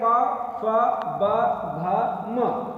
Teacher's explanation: प्रत्येक वर्ण को उच्चारित करने के लिए दोनों होठों का प्रयोग करना पड़ेगा। और दूसरी बात यह है कि जो अंदर से वायु बाहर आ रही है उसको रोकने के लिए हम क्या करते हैं, दोनों होठों का प्रयोग करते हैं। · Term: द्वयोष्ठ व्यंजन